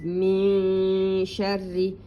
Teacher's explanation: the noon is hidden, as if you say ing, ing, it is the same. Your tongue is between up and down. So it is min sharri, and it's a thin one.